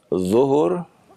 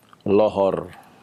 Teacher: Orang kita ya kalau membaca huruf dha itu terkadang berubah menjadi huruf lam ya. Seperti orang kita sering mengucapkan ya, salat zuhur berubah menjadi salat lohor ya, jadi lam ya, zuhur jadi lohor ya, ya.